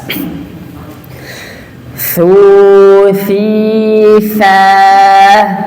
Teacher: Ketika mengucapkan huruf sa, dikeluarkan dulu ujung lidahnya. Dikeluarin dulu, baru dilepas.